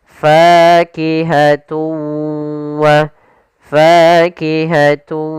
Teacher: Cara membacanya yaitu suara tanwinnya kita masukkan langsung ke huruf wau dan kemudian kita tahan gunahnya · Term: idgam ghunah, idgham bi gunnah